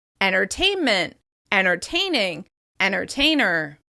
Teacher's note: You may hear that first /t/ sound disappear , so the words sound like "ennertainment," "ennertaining," "ennertainer." Here are